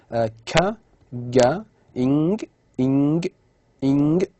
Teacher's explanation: So the back of the tongue, okay, touches what is known as the soft palate or the velum. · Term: velars